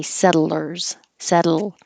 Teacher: you're kind of using a syllabic l when you say settlers settle when your tongue goes up to the T position set